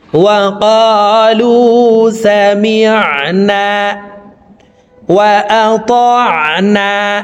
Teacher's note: আইনের মাখরাজ হলকের মধ্যখান থেকে হবে